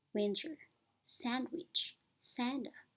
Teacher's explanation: They were dropped. When the t or d sounds follows a nasal consonant they may be dropped.